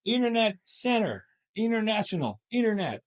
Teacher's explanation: if the T follows up the N it's just dropped